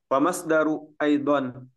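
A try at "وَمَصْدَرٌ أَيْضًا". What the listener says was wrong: Wamas Darun ya, ditanwinkan ya, Wamas Darun Aidan.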